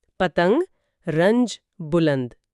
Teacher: ان الفاظ کو بولتے ہوئے اگر غور کریں تو ن کی آواز اتنی الگ اور صاف نہیں ہے جتنی کان یا شان میں تھی · نون ہے جس کی آواز پوری طرح ادا نہیں ہوتی، واضح طور پر نہیں، بلکہ لگتا ہے جیسے وہ اپنے بعد والے حرف کی آواز میں کچھ گھل مل گئی ہو، ضم ہو گئی ہو۔ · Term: نون وصلی